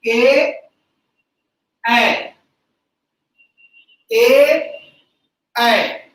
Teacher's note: कंठ से आ और ताल से ई, आ और ई मिलके बनता है ए ऐ। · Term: कंठ ताल